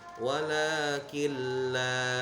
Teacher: Idgham artinya masuk, bila gunnah tanpa dengung. Jadi nunnya tidak dibaca, langsung masuk ke huruf lamnya. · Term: idgham bila gunnah